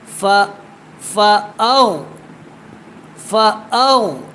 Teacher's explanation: حمزہ کو غین کے ساتھ میں نے جو ہے وہ ملا دیا